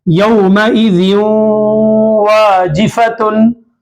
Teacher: अब आप देखें दो जेर तन्वीन है, तन्वीन के कायदे के बाद वाव इदगाम में माल गुन्नाम से वाव आ रहा है, तो जिन में जो नून है, ये नून की आवाज को नाक में घुमाते हुए वाव से मिलाना है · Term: इदगाम माल गुन्ना